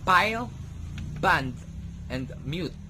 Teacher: Again, you will see that both my lips were together when I speak these words. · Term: Bilabial